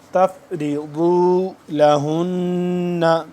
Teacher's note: ضاد کا مخرج ہے زبان کی بائیں کروٹ کو اوپر والے داڑھ کے ساتھ جب ٹچ کریں گے تو ضاد صحیح طریقے سے ادا ہوگا